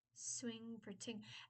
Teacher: s is an alveolar and t is an alveolar. So they're not fronting, it's actually staying in the exact same spot. It's just turning from a fricative to a stop.